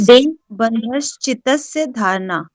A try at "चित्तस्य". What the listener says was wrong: हाँ, चितस्य नहीं है, चित्तस्य है, डबलता है, ठीक है ना।